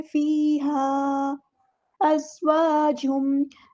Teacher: وَلَهُمْ فِيهَا، وَلَهُمْ، ہاں سمپل ادا کریں گے اور فیہا، یا مد آ گئی ہے تو الف کے برابر لمبا کریں گے. یہاں پر آپ کو مد دکھ رہی ہے تو یہ ڈسکنیکٹڈ مد یعنی مد منفصل ہے، اس کو 2 یا 4 to 5 کاؤنٹ لمبا کریں گے. فیہا ازواجم، زا کو ہم نے سختی سے ادا کرنا ہے، سیٹی آئے گی.